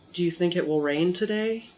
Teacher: so if I said do you think it will rain today and I go up at the end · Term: intonation